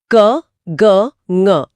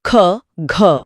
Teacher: महाप्राण में अधिक वायु निकलती है। इसमें ह की ध्वनि आती है।